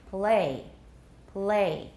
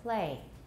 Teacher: when it comes after a voiceless sound either a fricative or a stop the l will often become devoiced